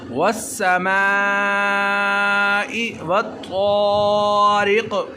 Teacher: हमने मीम को लंबा किया, वो इसलिए क्योंकि इसके साथ मद्दे मुत्तसिल है। मद्दे मुत्तसिल तब होती है जब हमज़ा उसी कलमा में हो, तो इसको चार अलिफ के बराबर लंबा करके पढ़ते हैं।